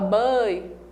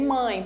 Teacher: o som nasal ele passa pela cavidade nasal e pela cavidade oral pelo nariz e pela boca